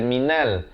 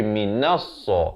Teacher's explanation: Jadi di sini alif lam syamsiah, lamnya tidak dibunyikan.